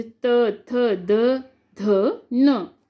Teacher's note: आगे है दंत्य, जब हमारी जीभ दांतों से टकराती है, दांतों को टच करती है तब दंत्य होती है